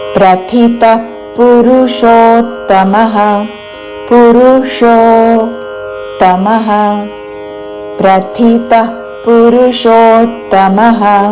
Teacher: విసర్గ ఉన్నది కాబట్టి దాని పక్కన ప తో పదం మొదలైనది శ్వాస వదులుతూ చివరన ప లాగా ఉచ్చారణ